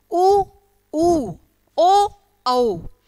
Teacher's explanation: इनको बोलते समय हमारा जो होठ है ना हमारे, वो घेरा बनाते हैं। ऊ ऊ ओ औ बन गया ना घेरा।